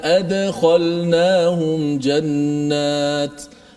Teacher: Dal yang mati tu. Dal tu dimati, kemudian dilantunkan bunyinya.